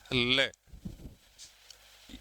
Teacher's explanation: उच्चारण में सांस जीभ के दोनों पार्श्वों से निकलती है। जीभ जो उच्चारण में जो सांस रूपी हवा जो है यह जीभ के दोनों किनारों से बाहर निकलती है। · उच्चारण में जो सांस रूपी हवा जो है यह जीभ के दोनों किनारों से बाहर निकलती है। दोनों किनारों के समांतर पैरेलल जो है वो निकलती है। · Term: पार्श्विक व्यंजन